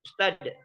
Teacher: kalau di Betawi itu ustad. Nah, mati T atau mati dal.